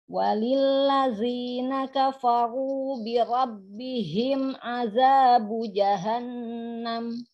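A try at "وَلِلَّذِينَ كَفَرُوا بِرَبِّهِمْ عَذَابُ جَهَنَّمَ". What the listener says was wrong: Tapi biasa aja ya, ya. Jadi jangan birabbihim, jangan juga terlalu ditekan. Karena hak itu sifatnya dia rokhawah, hamas ngalir. Ya, bukan ada tekanan yang kuat. Birabbihim itu jadi terlalu tekan-tekan. Ya, cukup birabbihim.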